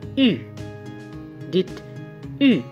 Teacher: U, la langue est en avant, la bouche est peu ouverte et les lèvres sont arrondies.